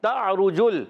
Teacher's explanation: عین کی آواز حلق کے درمیان والے حصے سے، را پر پیش ہے، را پر ہو جائے گا، جیم کو لام سے ملائیں گے، لام کو ہلائیں گے نہیں۔